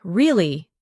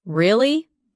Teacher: when you ask a question like, Really? your voice goes up slightly at the end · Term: rising tone